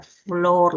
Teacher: En este caso, esta es la fricativa, ¿no? Es una fricativa labiodental. Es sorda y está representada por la letra F.